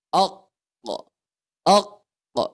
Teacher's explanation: huruf q dengan huruf Kaf ini keluar dari pangkal lidah kita nah diulang keluar dari pangkal lidah k kita mendekati tenggorokan kita